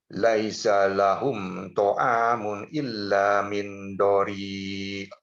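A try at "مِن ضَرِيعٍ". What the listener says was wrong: Jadi dia tidak kena kepada nun, tidak kena kepada nun. Di kayang, lidahnya sedikit digantung. Min dhari. Bukan min ya, tapi min dhari.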